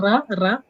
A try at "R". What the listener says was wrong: Yeah, the tongue is right here, right? But when it comes to English R, you're supposed to pull your tongue back. So it'll be like R.